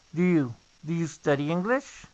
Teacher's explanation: cuando decimos do you, se produce el sonido de la D únicamente más el you. Y a veces inclusive se puede escuchar como ya.